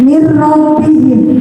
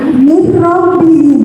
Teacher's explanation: Disebut bacaan idgham bila gunnah, artinya masuk dan dengan tidak dengung. Jadi nun sukun dibaca masuk ke dalam roh.